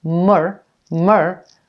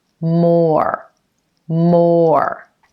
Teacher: you want to make sure you get a full pronunciation of the O vowel sound before you go into the ER at the end of this word or or almost like it has one and a half syllables